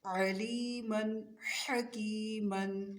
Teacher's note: عین اور حا کی آواز وسط حلق سے نکلے گی